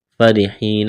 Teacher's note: را کو باریک کرنا ہے، را کے نیچے زیر ہے، یا مدہ ہے، ایک الف کے برابر کھینچنا ہے